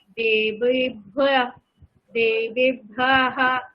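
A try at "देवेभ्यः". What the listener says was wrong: দেবেভ্যঃ, ভ্যঃ, ভ্যাম যখন বললেন তখন ভ্যঃ। ভ্যঃ ওখানে টান হবে না, দেবেভ্যঃ।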